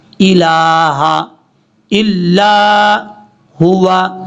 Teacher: کے اوپر مد ہے، اس مد کو مد منفصل کہا جاتا ہے، 2 الف کے برابر آپ نے لمبا کرنا ہے